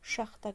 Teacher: Yəni söz vurğu axıra düşəndə şaxta, qışın soyuğu mənasında.